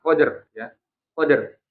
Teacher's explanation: Jadi jangan jangan hanya berhenti di qad gitu. Kalau berhenti di qad berarti itu maaf menghilangkan huruf rnya. Nah kalau sampai menghilangkan huruf ro berarti itu masuknya ke lahan ya. · dalnya sukun berarti dal punya sifat qola kan qod kemudian r-nya dibunyikan